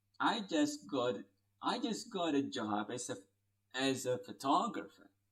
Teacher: because it is just a statement as i told you earlier so it will take a falling turn